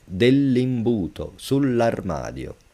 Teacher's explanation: And again, you read it like it's one word.